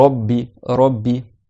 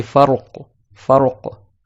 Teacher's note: Muraqqaqa, ça veut dire que tu fais pas un ra qui est emphatique, et mufakhama, c'est qu'il est emphatique. Quand le ra il a une fatha, ra et rou et une dhamma, et ben on dit qu'il est emphatique.